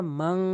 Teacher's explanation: একটি হচ্ছে মান বলে, মান বলা যাবে না, মাং বলতে হবে, নাকের ভিতরে নিতে হবে